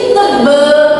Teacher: Kesalahan yang terjadi sering pada bunyi vokal A yang menjadi vokal E, sehingga seharusnya tebal sering diucapkan menjadi tebal.